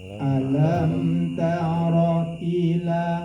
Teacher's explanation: Jadi kita membaca itu mimnya mati itu harus dikenyangkan dulu, dipas kenyang.